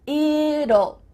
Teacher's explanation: when we say the contraction it will, we kind of add a little U sound before the L. It kind of sounds like U-L-L.